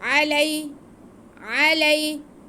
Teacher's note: आइन पे ज़बर, लाम पे ज़बर और या साकिन, ये यालीन है, इसको खींचना नहीं है।